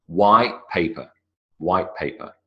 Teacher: I don't make a t sound.